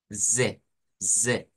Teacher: claro se compone de esa s y de esa e pero la s se convierte en s vibrante esa Z no es la z del español es la s vibrante